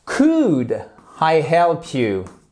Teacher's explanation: on ne prononce pas le l